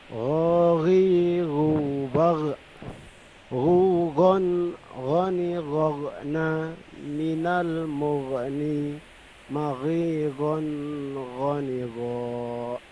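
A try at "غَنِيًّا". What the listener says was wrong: Idharnya diperjelas. Sebenarnya kalau pengucapan ghi-nya saya kira sudah tepat ya. Tinggal hukum tajwidnya saja ya. Ketika ketemu tanwin ketemu ghin maka jelas gitu loh.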